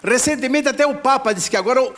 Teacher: o T não é chiado